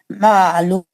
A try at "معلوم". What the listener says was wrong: عین کو اچھا ظاہر کرنا. معلوم